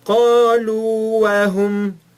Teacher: Nós não juntamos, nós falamos قالوا وهم. Nós esticamos o primeiro Waw sem vogal e depois falamos o Waw seguinte normalmente.